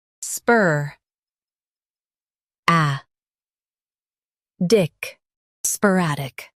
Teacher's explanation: Stress rad and keep sp light.